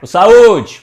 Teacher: Qual é que dura mais? É a letra U, não é? Então a letra U é a sílaba tônica.